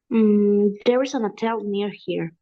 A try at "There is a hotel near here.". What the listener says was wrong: There is a ha, ha, ha. Hotel, H sound. Hotel.